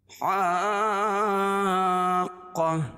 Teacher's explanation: گولتا کو وقفہ کی حالت میں ہائے ساکنہ سے بدل دیں گے